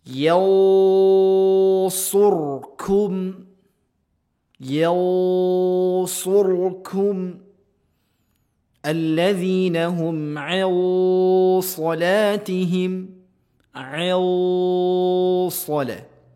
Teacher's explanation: Huruf yang tebal. Maka dengungan suara samar pada suara pelafazan ikhfa juga ditebalkan.